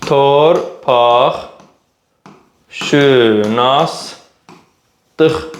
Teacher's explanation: Kar samitlə başlayıb, cingiltili samitlə bitib. T ilə başlayır, x ilə bitir. Deməli, karla başlayır, karla bitir.